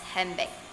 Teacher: the D sound blending into the following B sound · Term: Assimilation